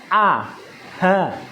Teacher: Yang pertama al-halqi, pangkal tenggorokan, yaitu makhrajnya hamzah dan ha